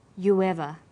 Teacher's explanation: You ends with oo, a high back vowel, so it links with linking type 2, the w sound. It becomes you ever.